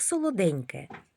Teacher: В слові солоденьке звук Нь м'який.